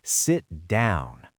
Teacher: The pitch drops on down. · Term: falling intonation